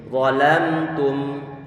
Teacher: Karena tidak dia tarik sedikit, cukup dia tarik sedikit untuk di satu sisi dia perlu untuk memberikan sifat bainiyah, di sisi yang lainnya perlu untuk ngasih gunnah pada huruf mim atau pendengungan pada huruf mim ini. Walamtum. Dan juga nggak boleh untuk dibaca lama ataupun penahan suara gunnah yang lama.